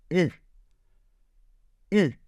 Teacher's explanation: vous ramenez un petit peu la langue donc vers l'arrière, et on a donc U.